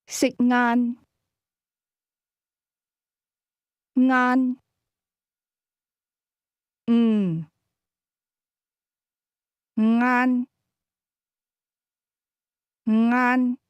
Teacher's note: The word lunch is pronounced with a midlevel tone.